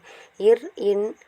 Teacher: மேல்வாயை நாக்கின் நுனி மிகவும் அழுத்தமாக பொருந்துவதால் பிறக்கின்றது